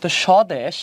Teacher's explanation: বফলা শুরুতে থাকলে উচ্চারণ হবে না